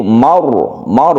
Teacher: ro sukun ro yang sebelumnya ada fathah dia itu dibaca tafkhim atau tebal sehingga membacanya itu maur bukan Mar tapi Mar ditebalkan kemudian azwajikapnya